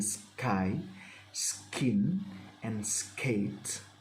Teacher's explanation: When K follows S, as in sky, skin, and skate. However, this is not aspirated with a puff of air.